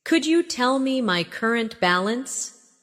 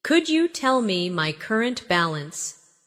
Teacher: Could you becomes could ya in faster conversation